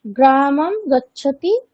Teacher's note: সংস্কৃতে অনুস্বারের উচ্চারণ সাধারণত মকারের ন্যায় হয়ে থাকে।